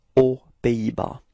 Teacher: So no link, no liaison between the words, so it's aux Pays-Bas.